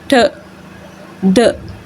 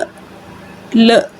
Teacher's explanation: जिस तरह से आप साउंड प्रोड्यूस करते हैं ठ ड, ठीक है, स ज, ठीक है, फिर एन साउंड है न ल। आपकी जो टंग है उसका जो पूरा फ्रंट पार्ट है, ठीक है, वो सारा टच कर रहा है एल्वियुलर रिजिड को